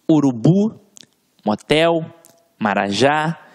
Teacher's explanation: olha aqui palavra de que funcionam como oxítonas urubu hotel marajá veja que a sílaba tônica está sempre na última sílaba